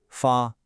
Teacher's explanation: to send is another one of those high flat first tones